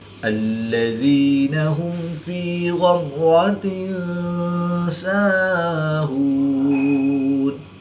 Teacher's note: زیر کی تنوین کے بعد سین حروف اخفا میں سے ہے تو یہاں پر اخفا ہوگا، یعنی غنہ زبانی کر کے پڑھیں گے۔